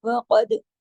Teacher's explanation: قاف موٹا، دال پہ کلکلا کیونکہ دال پہ جزم ہے ، وقد اف پہ آواز کو جمانا ہے، دو کو کھڑا